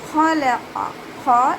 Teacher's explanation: ഖാഫും ഇസ്തിഅലാഇൻ്റെ ലെറ്ററാണ്. അപ്പോൾ 2ഉം ഉയർത്തിയിട്ട് ഉച്ചരിക്കുക. നാവിൻ്റെ ബേക്ക് മുകളിലേക്ക് പൊക്കി കൊടുക്കുക. അതിൻ്റെ കൂടെ ലാമിനെ ഉയർത്തരുത് കേട്ടോ.